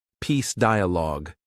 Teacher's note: Stress the first syllable of dialogue.